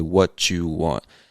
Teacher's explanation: words that end with a t that are also followed by words that start with a y we end up connecting those words by making a ch sound